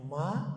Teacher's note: ada alifnya Mad thabii panjangnya dua harkat